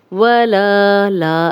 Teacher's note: لا الف مدہ ہے، 2 حرکات لمبا کریں گے۔